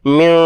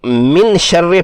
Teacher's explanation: من شر ما خلق، اس میں نون ساکن کے بعد شین حرف اخفا ہے، نون ساکن پر اخفا ہوگا۔ نون کی آواز کو ناک کے بانسے سے ادا کرنا ہوگا، 2 حرکات کھینچ کر۔ ہونٹ کھلے اور زبان اپنے مخرج سے تھوڑا پیچھے رکھنی ہوگی۔